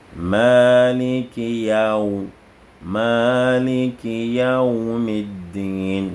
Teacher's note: C'est les lèvres. Waoun, c'est au niveau des lèvres en arrondissant les deux lèvres. Aou. Donc celui qui dit Maliki Yawmiddin légèrement n'a pas bien prononcé.